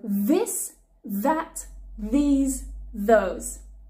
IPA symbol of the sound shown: ð